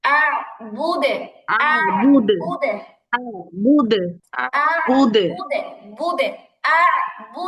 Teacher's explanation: দালের কলকলা জেরের কাছাকাছি হবে